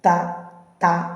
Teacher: പേര് പറയുമ്പോൾ തന്നെ എവിടെയാണ് നാവും മേൽപല്ലുകൾക്ക് സമീപവും ത നല്ല അങ്ങനെ മുട്ടി നാവും മേൽപല്ലും കൂടി മുട്ടി പറയുന്നതാണ് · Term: ദന്ത്യം